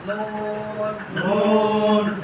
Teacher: জিহ্বার আগা তার বরাবর উপরে তালুর সঙ্গে লাগিয়ে